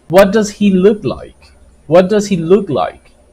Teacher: it goes down when you give the intonation to this question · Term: falling intonation